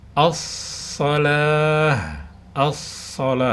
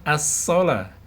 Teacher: ke huruf Shad huruf ini rentan terbaca huruf Sin ya perhatikan huruf Shad harusnya memiliki sifat istilla dan itbaq memiliki sifat istilla dan itbak jadi tebal dia